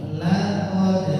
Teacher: La tipis qnya tebal